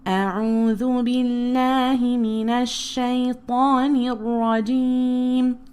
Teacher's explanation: this is a very nasal recitation because I have this nasal sound coming from the khayshum throughout my recitation, regardless of which letter I'm saying.